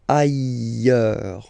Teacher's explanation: final S not pronounced, and then you've got this y sound.